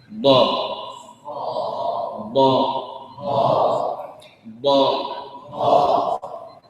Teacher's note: الهواء يخرج من يمين اللسان من يسارها ومن امامها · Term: الضاد المتحركه